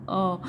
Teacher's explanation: मध्य स्वर होते हैं जब भी हम बोलते हैं अ तो हमारे जीभ का बीच का भाग लगता है